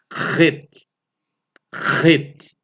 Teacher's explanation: Essa letra aqui é uma gutural, que é uma gutural, uma letra que, para a pronúncia dela, tem que ser forte, é pronunciada dentro da garganta mesmo, lá no fundo da garganta